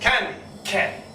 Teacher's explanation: the hard C, is dependent on posterior pharyngeal wall closing